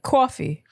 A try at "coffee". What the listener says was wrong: You're putting too much emphasis on the aw. It should just be relaxed. Just coffee.